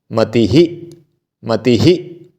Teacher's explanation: जिसकी अंतिम ध्वनि मति यानी ई है तो उसमें ह पे भी ई की मात्रा लग जाएगी छोटी ई की मात्रा मति ही मति ही ऐसे मति ही